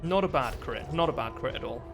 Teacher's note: Sorry, I'm doing the British thing. With me glottal stops.